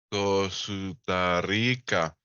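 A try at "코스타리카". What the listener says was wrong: Un poquito más despacito porque tiene que ser sílaba por sílaba.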